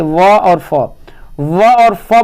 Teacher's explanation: निचले होठ और ऊपर के दांतों से व और फ व और फ बोलते हैं तो आपका दांत और ओठ नीचे वाला ओठ दोनों सट है